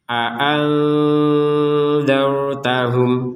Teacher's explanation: Ini nun sukun bertemu dengan dal, maka ini dibaca dengan samar.